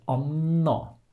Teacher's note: Since we write the double N, the A before will be short, but the first syllable is stressed, so we just elongate the N. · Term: long N